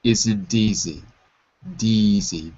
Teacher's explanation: in American English, the T sounds more like a D, isn't easy, deezy, D like dog.